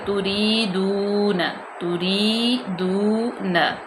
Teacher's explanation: ام تریدون، حمزہ زبر میم ام، یہاں پہ بالکل ہم ام غنہ بالکل بھی نہیں پیدا کریں گے، بالکل ظاہر کر کے ام تریدون، تا کو باریک، را بھی باریک، یائے مدہ اس کو لمبا کریں گے، دو یہاں پہ واو مدہ اس کو لمبا کریں گے